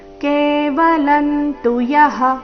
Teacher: ಅನುಸ್ವಾರದ ಉಚ್ಚಾರಣೆ ವ್ಯಂಜನ ರೀತಿ ಕೊಟ್ಟಿದ್ದಾರೆ ಕಾರಣ ಮುಂದೆ ತು ಬಂದಿದೆ